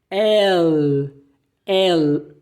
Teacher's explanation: você vai pronunciar o L do inglês, que é El, mas lá no final você muda para o espanhol e enrola a língua.